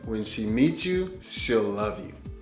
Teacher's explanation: When she meets you, she will love you sounds more like when she meets you, she'll love you. And here, that TS sound and the Y sound are starting to push together and sound alike.